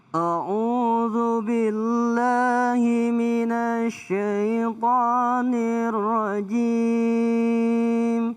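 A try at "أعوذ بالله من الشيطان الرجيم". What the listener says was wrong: A'udzu billahi nempel dari na ke sya minasyaitani. Jangan minasyai tapi minasyaitanir rajim.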